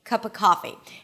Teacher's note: So, not only I reduced the a sound to awah, but I also dropped the v completely